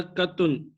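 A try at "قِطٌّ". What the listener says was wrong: कित्तुन, क्या आपके नीचे जेर है, कित्तुन, कित्तुन,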